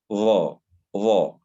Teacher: تلامس أو يلامس طرف اللسان أطراف الثناء العليا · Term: الحروف اللثوية